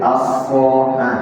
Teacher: So itu lebih baik Bapak mengucapkan sin ditebalkan.